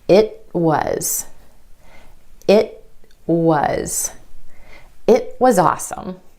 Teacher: You hold the tip of your tongue against the ridge behind your top front teeth, and you don't release any air. Held T happens at the end of words in American English. · The tongue goes up for the T at the end of the word it, holds there, and then straight into the W sound for was.